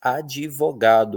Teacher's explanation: advogado, que a gente sabe, né, que só na escrita que é assim, porque na fala a gente diz advogado, como se tivesse um i ali